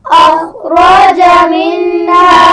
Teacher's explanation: اخرج خا اور را دونوں کو موٹا پڑھا جائے گا